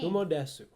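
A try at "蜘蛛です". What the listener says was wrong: Unfortunately, that's not Kumo desu, because the U part is silent.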